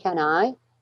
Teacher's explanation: do you see how can is not stressed